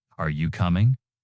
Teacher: Pitch rises at the end. I think maybe pitch rises slightly indicating more to come. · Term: rising intonation